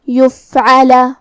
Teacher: فا حروف الہمس میں سے ہے اور ہمس کا معنی ہے حرف کی آواز ایسے کمزور ہو کہ اس میں پستی پائی جائے، تو ہم یہ کلمہ کو ایسے پڑھیں گے، یفعل۔